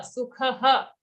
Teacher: After kha there's a visarga for which we have to say ha